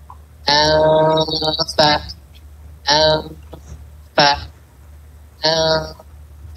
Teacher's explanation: Fa makhrajnya di batun syafa, di perut bibir. Jadi antum tempelin ke makhraj, tapi jangan sampai ditekan.